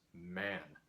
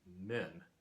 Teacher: that vowel going further forward in the mouth in the plural